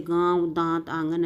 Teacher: अनुनासिक वो है नाक से ध्वनि और मुख दोनों से बोले